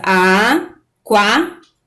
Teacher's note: E aquário é a mesma coisa, aquário. Então essas duas vogais, uma vogal, uma semivogal, elas estão juntas na mesma sílaba, ela é um ditongo